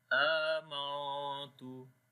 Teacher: We are hiding the sound of noon into our nose due to ikhfa.